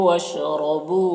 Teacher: وَشْرَبُوا را کو پر پڑھیں گے، زبر ہے